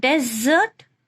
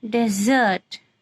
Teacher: So in nouns, first syllable is stressed, and in verb, second one is stressed.